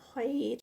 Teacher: خیر خا ہیوی، اور آگے جو ہے وہ 4 کاؤنٹس کا اسٹریچ ہوگا